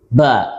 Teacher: Kemudian syiddah, kuat, ya, sandarannya kepada makhrajnya sangat kuat. Ba sampai tertutup, tertahannya aliran suara saat mengucapkannya. Kemudian bersifat istifal, menurun, ya, karena pangkal lidah dalam posisi turun sehingga suara yang dihasilkan tidak tebal atau tarqiq, ya.